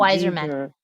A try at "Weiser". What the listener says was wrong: no, there's no man. Man, it's just Weiser.